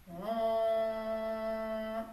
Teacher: ONG, O-N-G, en le nasalisant, en le faisant vraiment vibrer partout à l'intérieur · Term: le son ONG